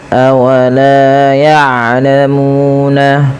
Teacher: Panjangkan huruf lam sepanjang dua harakat dan huruf mu sepanjang dua harakat. Karena kedua bacaan ini adalah mad thobi'i. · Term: mad tabi'i